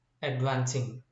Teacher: root word okay and ing is suffix advancing now here vance in the root word vance is a syllable which is stressed and by adding suffix here this stress of the root word